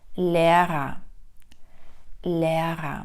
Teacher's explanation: перша р стоїть або знаходиться перед голосною вона чітко вимовляється друга знаходиться після голосної не вимовляється як е а вокалізується Лера